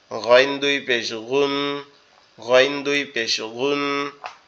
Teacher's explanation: সাথে লেগে আছে এই অংশটা এই অংশ থেকে উচ্চারিত হবে কিন্তু মনে হবে কি গালের ভিতর থেকে উচ্চারিত হচ্ছে